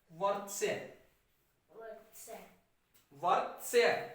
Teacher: त पूरा नहीं है, त के बाद अ की आवाज नहीं आ रही है, उच्चारण इसका होगा वर्त्स्य, और र आधा है, और आधा र अगली मात्रा पर लगता है।